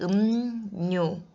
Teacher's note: 무 소리 뒤에서 리을이 음료. 비음인 니은으로 바뀌어서 발음이 되고 있습니다. 이것이 바로 비음화죠.